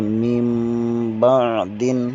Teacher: نون ساکن کو میم میں تبدیل کر دیں گے، پڑھیں گے من بعد۔ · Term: اقلاب